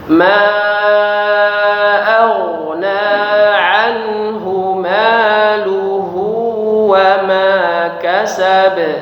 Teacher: Ma dipanjangkan 5 harokat, kemudian huruf ghain itu mengalir ya. Ma aghna tidak terputus, jangan kita baca ma aghna ya, atau malah dipantulkan ma aghna, bukan aghna tapi mengalir hurufnya ya.